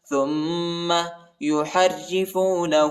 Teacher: را کو شدت کے ساتھ پڑھیں گے اور باریک پڑھیں گے